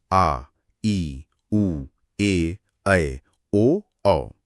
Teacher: इनमें ह्रस्व से ठीक दोगुना समय लगता है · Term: दीर्घ स्वर